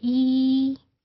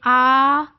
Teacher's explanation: ई तो आपको टंग कहीं ऊपर फील होती है, और जब आप कहते हैं आ तो टंग नीचे है